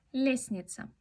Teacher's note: En la palabra lestnitsa lo pronunciamos como lesnitsa. La T no se pronuncia.